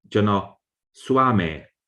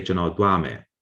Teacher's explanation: the old S at some point became pronounced like the or th.